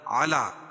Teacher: کھڑا زبر قائم مقام الف مدہ کہ اس کو ایک الف کے برابر کھینچ کے پڑھیں گے